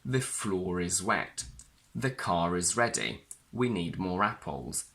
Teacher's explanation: a silent R inside a word which we must however pronounce as a linking when we connect these words to a vowel sound we say the floor is wet the car is ready we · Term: linking r